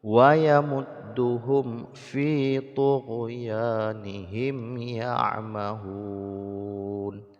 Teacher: dibaca mim sukunnya dengan jelas tanpa didengungkan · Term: syiddatul izhar